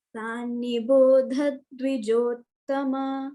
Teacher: So dha mahaprana we have to retain and give a dvitva effect also.